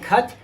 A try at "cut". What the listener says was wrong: Not tut, but do it with me. Cut.